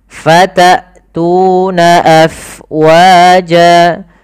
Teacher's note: jelaskan suara hamzahnya karena dia punya sifat yang mencolok, yaitu jahar dan syiddah.